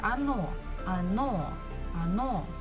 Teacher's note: the second syllable is stressed so we must pronounce it the first one is not so we pronounce it as a